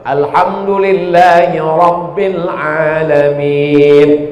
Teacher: Ra-nya mesti tafkhim tebal.